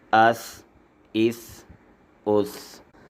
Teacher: سا کو ادا کرتے ہوئے زبان کا کنارہ جب سامنے کے اوپر والے دانتوں کے نیچے رکھتے ہیں تو اس سے سا ادا ہو جاتا ہے